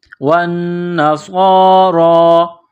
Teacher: ہادو، والذین ہادو، والنصارى، واو کو نون کے ساتھ ملانا ہے، پلس کرنا ہے، نون مشدد ہے تو یہاں آواز ناک میں چھپائیں گے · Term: غنہ